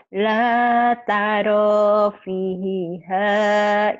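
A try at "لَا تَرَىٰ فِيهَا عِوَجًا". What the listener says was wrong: la, lanya panjang. La taro, lanya panjang. La taro, la tarofiha miwaja. Iwaja, gitu.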